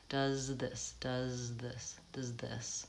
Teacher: I have to move my tongue from the Z position which is behind my teeth and I have to move my tongue forward between the teeth and then pull it back